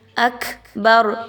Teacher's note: کاف پر ہمز کی صفت کو لائیے، تھوڑا سا کاف کو اکبر یہ آواز اندر آنی چاہیے۔